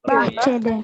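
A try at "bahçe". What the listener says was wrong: Bahce. Di sini kita belum menggunakan D ya. Tadi bahce D itu tadi salah ya. Kebun itu artinya bahce, nggak ada D-nya. Kalau D nanti artinya di kebun ya.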